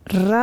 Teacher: हमारी जीभ जो है वो ऊपर जा कर के गोल गोल बेलन की तरह घूमती है और फिर ये आवाज़ निकलती है रा की, इसलिए इसको बोलते हैं लुंठित।